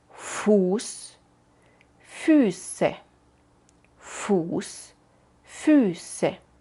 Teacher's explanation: También cuando ves la SZ, esta letra rara que se puede llamar SZ o scharfes S, entonces siempre es la versión de la S sin voz, incluso en el plural.